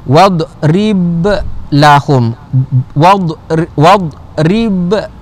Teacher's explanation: Jadi contohnya contoh bila kita baca wadrib lahum, bila kita sambung, maka dia dalam bacaan kita kan, dia di tengah-tengah bacaan kita kan, maka hukumnya adalah qalqalah sughra. Sughra tu kecil, jadi lantunan dia itu tidak berapa kuat.